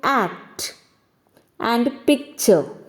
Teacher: plosive constant is followed by another plosive or an affricate sound in the same word the first plosive is not fully pronounced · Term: incomplete plosives